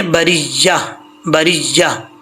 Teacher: अगर यहाँ पे स्टॉप करेंगे तो ये ता हा से चेंज हो जाएगा